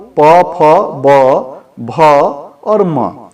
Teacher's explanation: उन वर्णों के बारे में जिनका उच्चारण ओष्ठ से होता है